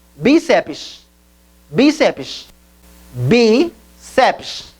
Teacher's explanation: É uma palavra parossítona porque a maior inflexão da voz acontece na penúltima sílaba e termina em PS, então se acentua graficamente.